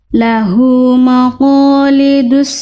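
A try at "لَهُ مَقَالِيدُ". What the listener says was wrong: Mim itu huruf tebal, huruf tipis Bunda? Tipis, jadi Bunda maknya ke bawah tebal qaf. Lahu maqa, harusnya lahu ma. Tipiskan, jelaskan fathahnya, tipiskan mimnya. Lahu maqa, lahu maqalidu.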